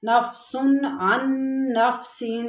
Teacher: اب یہاں پر دیکھیں نفسن ہم نے کہا اظہار کیا، کیونکہ یہاں پر تنوین کے بعد حروف ہلکی کے 6 حروف میں سے عین ہے تو یہاں پر اظہار ہوگا